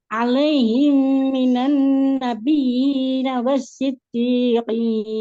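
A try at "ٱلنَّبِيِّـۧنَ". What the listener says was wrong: Ini fokusnya berubah ke wasiddiqin, akhirnya nabiyyi, ya-nya kurang tekan. setiap ya tasydid itu wajib kita tekan. Nah, ini tadi yang agak kelewat.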